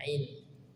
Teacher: Keluar dari tenggorokan bagian tengah, ain, epiglotis bagian tengah tenggorokan kita, ain, wal. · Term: huruf ain